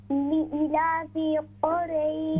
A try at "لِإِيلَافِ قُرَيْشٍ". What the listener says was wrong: Yeah, the E gonna be a bit longer. لإيلاف.